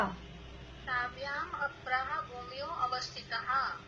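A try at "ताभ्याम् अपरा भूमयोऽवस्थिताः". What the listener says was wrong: हाँ, ए साइलेंट है उसमें। ताभ्याम हाँ, शब्द है अवस्थित, लेकिन वो साइलेंट है, बोलने में नहीं आएगा। हाँ, ताभ्याम अपरा भूमयोवस्थिताः।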